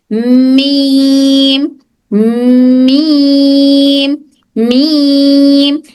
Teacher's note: मीम में हमारे होंठ और हमारी नाक उसका मखरज है। · हमारी नाक की जो होल है, यहाँ से भी मीम की आवाज आती है।